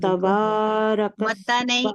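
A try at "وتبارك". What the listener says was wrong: وتا نہیں، نرمی سے پڑھیں گی. واتا. پھر وتا نہیں پڑھیں گی، واتا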